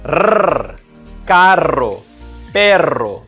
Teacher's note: the rolled R, or the trill, is done with the tongue tapping the roof of the mouth multiple times.